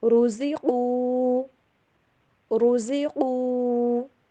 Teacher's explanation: را کو موٹا پڑھنا ہے، زا کی آواز کلیئر اور قاف کو بھی موٹا کر کے